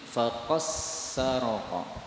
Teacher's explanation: Dal ketemu dengan Sin lagi-lagi Bisa idgham menjadi faqasarqo